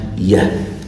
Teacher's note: the ye sound actually comes from the palate. It's a palatal sound. And as you see in the picture, this is where in the organs of speech diagram, this is where palatal sounds are made.